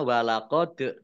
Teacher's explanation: dal sukun bacaan qalqalah dibaca memantul, ditampakkan pantulannya